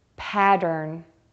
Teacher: to say the word pattern focus on the second syllable D start with a D sound move to the R by pulling your lips back and then finish with an N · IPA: pædɚn